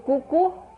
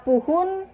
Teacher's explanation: fonem O diucapkan menjadi U